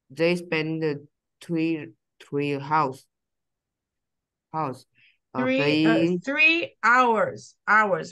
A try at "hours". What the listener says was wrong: We don't say the H.